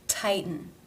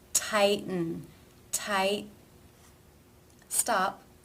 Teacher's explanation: The schwa is a vowel sound, but when the T is followed by the schwa and the N sound, the T is not pronounced as a flap, even if there is a vowel before. Rather, it is pronounced as a stop. For example, the word tighten. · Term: the stop